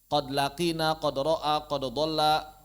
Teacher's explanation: Adapun kata qad kalau bertemu dengan lam, kalau bertemu dengan ra, maka dia diizharkan